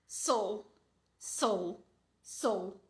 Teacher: vogal bem suave sou sou sou minha boca nem abre né a vogal é tão fraca minha boca nem abre para pronunciar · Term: chuá